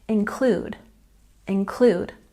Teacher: we've got a stress on the second syllable